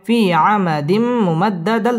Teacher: তানবিনের বামে মিম আসছে ইদগামে বা গুন্না গুন্না সহ মিলিয়ে পড়তে হবে